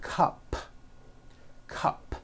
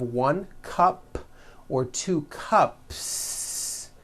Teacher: if you add an S to the word cup to make it plural, the S you add also remains unvoiced.